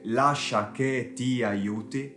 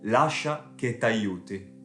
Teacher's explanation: Così come nessun madrelingua inglese direbbe nella vita di tutti i giorni "let me help you", ma più probabilmente "let me help you", anche in italiano i madrelingua ricorrono spessissimo a elisioni, ovvero l'eliminazione di una vocale quando se ne trovano due uguali di seguito, o a volte anche se sono diverse